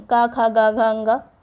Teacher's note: पहला जो अक्षर होता है उसी के नाम से वो वर्ग जाना जाता है। तो पहला जो वर्ग है का वर्ग, यहाँ पे सभी चीज़ें कंठ से बोली जाती हैं